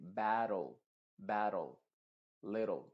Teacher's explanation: Por ejemplo, en palabras en donde tenemos que terminan en TLE, esa E del final se viene y se pronuncia entre la T y la L. Y de hecho la T va a funcionar como una R en este contexto.